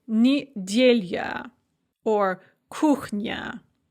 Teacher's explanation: If you have an unstressed ya at the end of a word, it can often be pronounced as a kind of a y sound